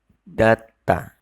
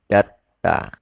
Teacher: Untuk suku kata yang pertama, bacimnya bukan dibaca D, namun T.